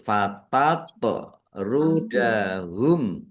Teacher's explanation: Mim sukun bertemu dengan huruf fa. Bacaan izhar syafawi dibaca jelas. · Tok sukun, bacaan kolkolah. Dibaca memantul. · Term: qalqalah